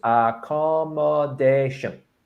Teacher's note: You stress the fourth.